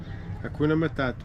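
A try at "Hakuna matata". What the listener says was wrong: Hakuna matako. You said matako. matata. Not ta. Ta.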